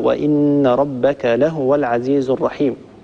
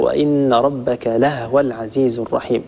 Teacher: ورش وحفص يقرآن بضم الهاء وإن ربك لهو العزيز الرحيم. أما قالون وأبو عمر أيضا الكسائي وأبو جعفر هم من يسكنون الهاء